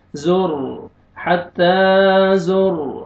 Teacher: را ساکن سے پہلے ضمہ، را کو پر کریں گے